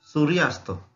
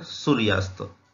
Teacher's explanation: सूर्य या शब्दामधील शेवटचा वर्ण हा अ आहे। अस्त या शब्दामधील पहिला वर्ण हा अ आहे। अ अधिक अ बरोबर आ। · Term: स्वर संधी